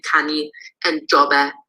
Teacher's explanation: In the perfective, we seem to have a low tone coupled with a front vowel perfective marker. So we get kani and jobe.